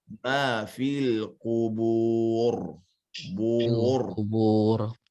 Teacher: Tarikannya tidak boleh standar seperti getaran orang Indonesia bilang R.